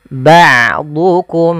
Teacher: diganti dengan Hamzah jangan ba' duukum tapi dia Ain ba a Ain memiliki Salah satu sifat yaitu sifat bainiah yaitu tidak terlalu ditahan suaranya dan tidak terlalu dialirkan tapi tengah tengah